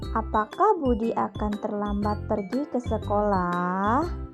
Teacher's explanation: cara membaca tanda tanyanya dengan nada suara semakin menurun